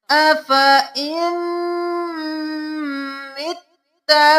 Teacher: اب حمزہ زیر میم ام کریں گے، نون کو نہیں پڑھیں گے۔ اف ام تشدید ہے تو گنہ کیا، ام مت اور پھر تا تشدید ہے دو بار ادا کیا، متا نہیں کرنا، مت اور تا۔ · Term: غنہ